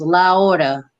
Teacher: That last A, that A in hora is going to connect to the word es, to the complete word.